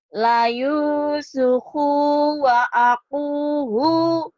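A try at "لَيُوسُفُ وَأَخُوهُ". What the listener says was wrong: terbalik. Ini fu, ini khu. la Yusufu. La Yusufu wa akhuhu. Yusufu wa akhuhu. Yusufu.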